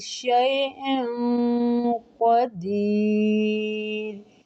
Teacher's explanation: شیء قدیر موٹا اخفاء، قاف مستعلیہ حروف ہے